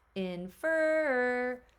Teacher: So my stress is on that second syllable.